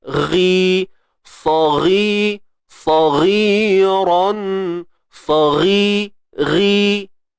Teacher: Huruf isti'la, huruf yang tebal. Terangkat pangkal lidah lah.